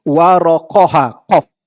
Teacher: Tebal ibarat suara memenuhi mulut